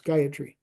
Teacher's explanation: all the syllables are Level so it's gayatry just go straight across like that and it · there's no stress on the yah um all the syllables are Level so it's gayatry just go